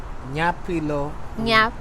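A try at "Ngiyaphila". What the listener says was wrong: Nyaphila. It's NG.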